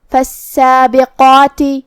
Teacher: قاف کو ہم زبان کی جڑ اور تالو کے نرم حصے سے ادا کریں گے۔ قاف حروف تفخیم میں سے ہے تو ہمیں قاف کو اور جو کہ اس کے بعد مد الف ہے تو ہم دونوں کو بھاری آواز میں ادا کریں گے۔